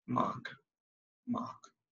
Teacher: instead of you to pronounce the R, you'd rather make it sound, or it rather sounds like ah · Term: silent in the R